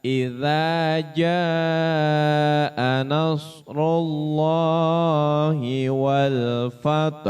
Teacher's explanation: Enam harakat, ya. Jadi agak panjang mad jib muttasil.